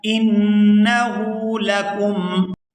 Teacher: آگے ہا پر الٹا پیش ہے تو اس کو کھینچ کر ادا کیا جائے گا